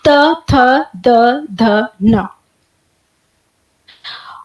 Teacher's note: जीभ की जो नोक है वो दांतों के, ऊपरी दांतों के पिछले हिस्से से टकराती है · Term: तवर्ग